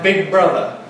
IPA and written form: ˈbɪg̚ ˈbrʌðə (big brother)